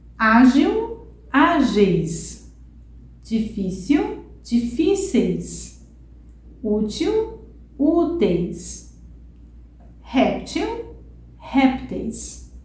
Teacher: a penúltima sílaba é a sílaba forte é que a gente entona mais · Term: paroxítono